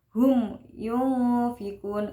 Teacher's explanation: hukum bacaan mim sukun bertemu ya, itu idhar syafawi, dibacanya jelas hum yunfikun.